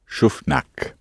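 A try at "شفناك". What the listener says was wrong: With a little longer ending. Listen to Mahmoud. So the vowel's actually got a bit longer because we've hit the end. Schufnak, we saw you.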